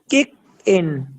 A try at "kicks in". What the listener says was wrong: kicks. There is S. Remember to pronounce the S, please. Kicks in. In there is a S, letter S. Kicks in. Makes. Why are you removing the S? There is S.